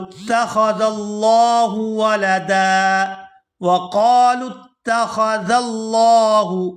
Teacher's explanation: یہاں پر بھی لفظ اللہ کے لام کو پورا ادا کیا جائے گا اور اس کو کھینچ کر ادا کریں گے کیونکہ اس کے اوپر کھڑی زبر ہے